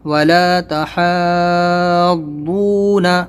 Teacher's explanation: یہاں پر آپ کو حا ضاد کھڑا زبر حا بولنا ہے، حد نہیں بولنا ہے، کیونکہ کھڑا زبر ہے تو اس کو ہا کو پھر ضاد میں ملائیں گے تو حا ہو جائے گا.